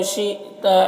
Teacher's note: حمزہ ساکنہ ہے تو جھٹکا لگے گا